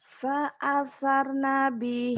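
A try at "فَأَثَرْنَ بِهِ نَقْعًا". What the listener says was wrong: Fa'asar nabihi. R-nya sempurnakan dulu. Kalau kok gini. Pasar nabihi. Ke pasar nggak jadi. Ke pasar jadi nggak. Fa'asar. Tapi jangan panjang. Juga jangan buru-buru. Rohnya selesaikan pengucapannya. Fa'asar nabihi naqa'a.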